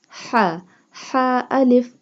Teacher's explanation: ha pronounced from the middle part of the throat.